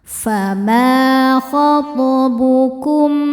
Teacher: Cara bacanya memantul dengan pantulan yang kecil. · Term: qalqalah sugro